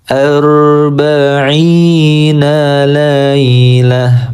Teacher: cara berhenti pada tak marbuto kita sukunkan menjadi huruf H